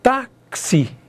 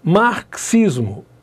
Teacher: Olha lá os X tem valor de xi dois fonemas é um dífono